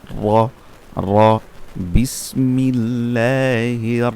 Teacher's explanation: র হচ্ছে জিহ্বার আগার উল্টা পিঠ তারপর উপরের তালুর সাথে লাগবে